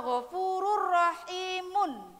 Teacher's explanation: Ghafurun halimun atau ghafurur rahimun, itu ada tanwin bertemu dengan huruf ro, tidak boleh mendengung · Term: idgham bilahuna